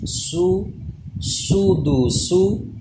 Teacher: سیٹی پیدا ہوگی یعنی زبان دانتوں سے پیچھے رہے گی ، سین پیش سو، دال پیش دو سودو، سین پیش سو